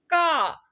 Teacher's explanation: का के उच्चारण में कम हवा निकल रही है ना इसे हम अल्प प्राण व्यंजन कहते हैं